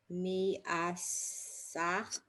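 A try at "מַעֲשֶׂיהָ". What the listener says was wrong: So again, under the mem is a ah. So ma, ah, seha, se. So the dot on the sin isn't a vowel. It's just telling you it's a sin, not a shin, and it has 3 dots under it. So seha, ma'aseha.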